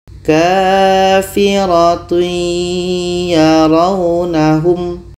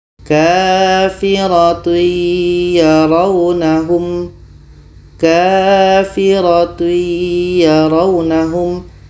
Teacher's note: Yaitunya masuknya kurang sempurna. Ketika tanwin bertemu ya, bunyi tanwin ini tidak sempurna masuk ke ya. Masih ada bunyi tanwinnya. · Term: idgham nakish